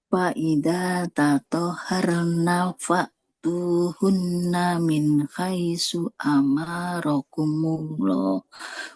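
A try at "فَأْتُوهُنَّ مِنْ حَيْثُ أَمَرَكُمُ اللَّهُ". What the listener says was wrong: Min haitsu amara, mimnya nggak boleh panjang. Min haitsu amarakumullah.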